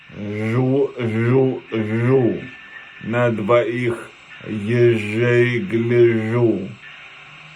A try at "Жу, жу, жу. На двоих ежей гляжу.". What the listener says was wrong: Смягчается на жу. А ну-ка еще.